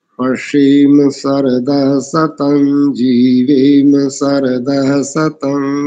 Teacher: तालव्य शकार के स्थान पर दंत्य शकार आया आपका, और दंत्य सकार के स्थान पर आपका तालव्य सकार है लगभग सब स्थानों में, तो इसको ठीक कर लीजिएगा बस।